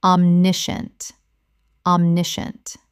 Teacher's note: The scient collapses to shunt.